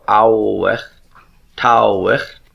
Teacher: The Awith, remember the Vav would have originally been pronounced as a W sound, so Awich, Tawich.